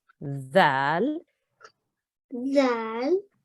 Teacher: your front teeth at the top should touch the tip of your tongue. So you don't make a buzzing sound, you make a the sound.